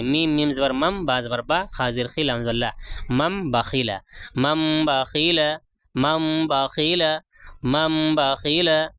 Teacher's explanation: اور قاعدہ کیا ہے، نون تنوین اور نون ساکن کے بعد، یہ نون ساکن ہے نا، نون ساکن کے بعد با آیا ہے تو کیا ہے، اقلاب ہوگا، یعنی نون کو میم سے بدل کر پڑھیں گے